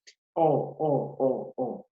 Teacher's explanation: Porque cuando yo pronuncio esta vocal, mi lengua, ¿qué va a pasar? Se va a ir para atrás.